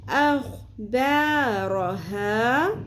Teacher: ایک الف کے برابر کھینچیں گے، اخ با رو ہا، خو کو پر کریں گے، رو کو پر کریں گے، لیکن با اور ہا کو پر نہیں کرنا